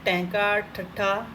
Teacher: ਉਲਟ ਜੀਭੀ ਮਤਲਬ ਜੀਭ ਦਾ ਜਿਹੜਾ ਫਰੰਟ ਵਾਲਾ ਥੋੜ੍ਹਾ ਜਿਹਾ ਪਾਰਟ ਹੁੰਦਾ ਉਹ ਕੀ ਹੈ, ਮੁੜ ਕੇ ਪਿੱਛੇ ਲੱਗ ਜਾਂਦਾ, ਠੀਕ ਹੈ, ਪਲਟ ਜਾਂਦਾ, ਤਾਂ ਉਹਦੇ ਕਰਕੇ ਮੂਰਧੁਨੀ ਜਾਂ ਉਲਟ ਜੀਭੀ ਕਹਿੰਦੇ ਆ।